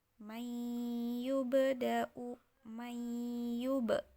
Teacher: Jadi ini ada di tengah-tengah ayat atau kalimat, maka ba-nya ini dipantulkan dan disebut dengan qalqalah sughra karena dia terdapat di tengah-tengah ayat.